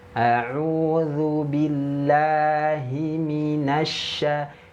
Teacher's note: jangan bunyi me, tapi mi. Rangnya turun, vokalnya i.